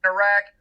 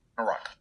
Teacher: Conservatives were more likely to use the trap vowel, Iraq, while liberals were more likely to use the lot vowel